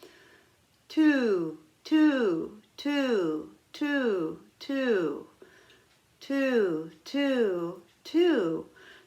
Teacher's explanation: For me, my tongue makes the T syllable right behind my teeth on the gum line.